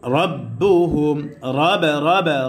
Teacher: পুর করে পড়তে হবে, অর্থাৎ মোটা করে পড়তে হবে।